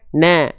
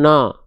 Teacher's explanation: Huruf tipis maka dilafalkan na bukan no. Tipiskan vokal a-nya. Buka mulut sedikit seedikit senyum.